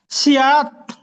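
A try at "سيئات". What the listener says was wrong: সিনের উপরে, মাশাআল্লাহ, সিনের সিনের উপরে মাদ আছে, দেখতে পাচ্ছেন?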